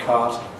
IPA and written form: kaːt (cart)